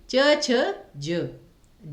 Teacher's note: च, छ, ज बहुत आसानी से आपने बोला, तो ये आपका अल्प प्राण ही आएगा